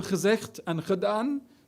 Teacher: the harsh G pronounced as kh in Dutch verbs